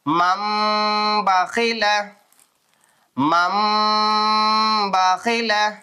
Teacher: கொஞ்சம் குன்னா செஞ்சு கொஞ்ச நேரம் அப்படி மூக்குல வச்சு ஓதணும்